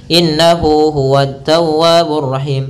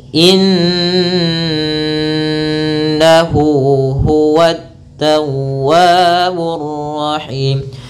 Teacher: ketika kita baca Nun itu kita tahan dulu suara nnya maka innahu tidak langsung dilepaskan innahu banyakan kita melepaskan langsung innahu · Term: gunah